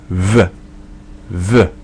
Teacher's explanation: Using both lips, it's a B where the air goes through.